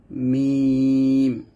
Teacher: উভয় ঠোঁট মিলিয়ে ঠোঁটের শুকনো জায়গায় হতে মিম উচ্চারণ করতে হয়